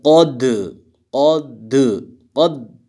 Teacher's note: لقد قاف موٹا ہے، دال میں قلقلہ ہوگا، یعنی قلقلہ کا مطلب ہے کہ آواز ڈبل آنی چاہیے، آواز 2 مرتبہ لگنا چاہیے کہ انسان نے یہ حرف 2 مرتبہ پڑھ.